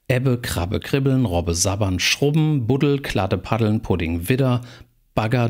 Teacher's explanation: stimmhafte obstruenten am Silben Gelenk